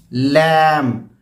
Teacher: लैम, इसमें ये ज़बान तो यहाँ लगेगी तालू पे, अपर गम्स के एरिया पे, लेकिन जो पिछला हिस्सा जो ज़बान का है वो नीचे की तरफ जाएगा, ऊपर नहीं जाएगा, नीचे की तरफ। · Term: लाम बारीक